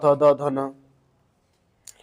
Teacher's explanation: ऊपरी दांतों के निकट से बोला जाता है। उपरी दांतों के निकट से दंत मतलब त द ध न।